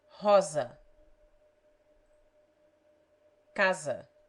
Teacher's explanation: it has the z sound when it stands between vowels